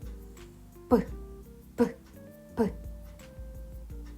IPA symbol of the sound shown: п